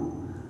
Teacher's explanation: Kalau dhammah hurufnya dibaca u, kalau kasrah dibaca i, kalau fathah dibaca a, ya. Jadi ini dhammah bu, du. Bukan kita ucapkan bodo.